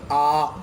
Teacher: विवृत स्वर के उच्चारण में पूरा मुंह खुल जाता है, यानी जब इनको हम बोलते हैं तो मुंह ऐसा लगता है जैसे पूरा खुल गया हो।